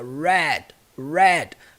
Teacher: qualquer palavra que se inicia com R vai ter aquele som do R caipira